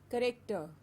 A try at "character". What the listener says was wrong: Yes, it's a character and not corrector. A clear a sound, character. Character. Character. No, not a corrector, but a character. Character.